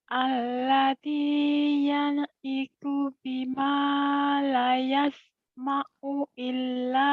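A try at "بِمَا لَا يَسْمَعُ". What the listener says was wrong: bima lanya panjang ya.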